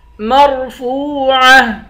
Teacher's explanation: فا کے بعد واو ہے، واو حروف مدہ ہے، اس کو ایک الف کی مقدار کھینچ کر پڑھیں گے